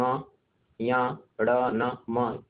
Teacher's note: अनुनासिक संज्ञा में जो वर्ण है, अब जैसे उच्चारण कहिए, जो अंतिम वर्ण, वर्गों के जो अंतिम वर्ण होते हैं, पंचमाक्षर जो होते हैं, वो अनुनासिक होते हैं। ठीक, जो वर्गों के पंचम वर्ण होते हैं वो क्या होंगे, अनुनासिक। जैसे हम कहेंगे ङ, या, ड़, न, म, ये क्या है, इनका उच्चारण नासिका से होता है।